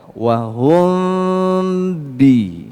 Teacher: ketika huruf ba itu diucapkan maka si bibirnya akan rapat dan ketika Rapat ini bunyi samarnya akan pindah ke bunyi jelas sehingga terdengar Hum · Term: Ikfa Syafawi